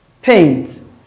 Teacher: That is bilabial, voiceless, paint